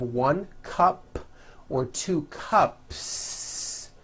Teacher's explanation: There's no voicing at the end of that word. The S remains unvoiced.